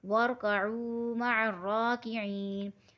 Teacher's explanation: وَارْكَعُوا مَعَ الرَّاكِعِينَ، یہ ہو جائے گا واو مدہ، واو ساکن سے پہلے پیش ہے تو ہمیں واو مدہ کو ایک الف کی مقدار پورا کھینچ کے پڑھنا ہے